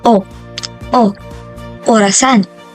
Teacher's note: ang patinig na o naman ay nabibilang sa palikod na pagitna na posisyon ng bahagi ng dila